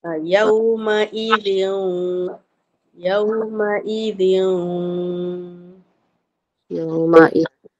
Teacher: Ini pun idgham maal ghunnah. Dia kena masuk dan dengung. Maksudnya bila picit tu dia ada tersekat kat hidung.